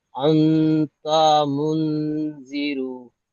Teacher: রয়ের উপরে পেশ আছে, পেশটি হলো হারাকাত, হারাকাতকে তাড়াতাড়ি পড়তে হয়, টান দেওয়া নিষেধ।